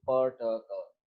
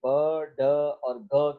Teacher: प, ट, क में इतना ज्यादा प्रेशर नजर नहीं आता और वॉइस जो है जो वोकल कॉर्ड्स हैं वो वाइब्रेंट नहीं होते जिस तरह से ब, ड और ग के अंदर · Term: वॉइसलेस एंड प्लोसिव्स